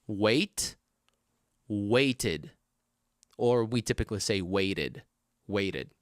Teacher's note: the ed ending is going to be pronounced id with the vowel sound in front of it, okay? When your original verb ends with t or d.